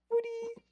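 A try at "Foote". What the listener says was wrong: foot. It's just foot. Yeah. Molly's the British one, and you're the one going around saying footy.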